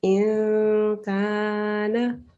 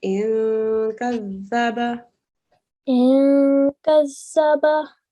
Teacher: So what happens is that the nun sakin is hidden slightly because of the kaf that is following it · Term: ikhfa